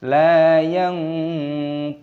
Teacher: nun sukun bertemu dengan huruf ta, ini hukumnya dibaca ikhfa. Cara membacanya yaitu disamarkan. La yantiqun, qafnya dibaca panjang, ada wawu sukunnya, panjangkan dua ketukan mad tabi'i, dan nunnya di sini dibaca mati ataupun sukun.